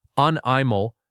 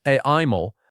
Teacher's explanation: The stress goes on the first syllable.